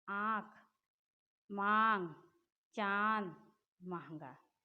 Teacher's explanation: अनुनासिक, ये चंद्र बिंदु भी इसे कहते हैं। इसके उच्चारण में हवा नाक और मुंह से निकलती है, जैसे आँख, मांग, चांद, महंगा।